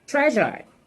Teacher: this is a voiced sound it's a palatal sound and it's a fricative sound